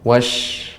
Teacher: Namun huruf shinnya masih kurang lebih tebal lagi, lebih ditampakkan lagi tafasyinya, menyebarnya suara